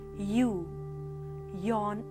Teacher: During the articulation of y, lip rounding is anticipated if the immediately following vowel is a rounded vowel